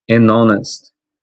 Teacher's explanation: o H não vai ser pronunciado, vai ser considerado aqui na pronúncia da palavra a próxima letra.